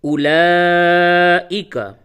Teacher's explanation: اس میں جو واو ہے یہ رسم الخط کے طور پہ لکھنے میں تو استعمال کیا جائے گا، لیکن اس واو کو پڑھا نہیں جائے گا۔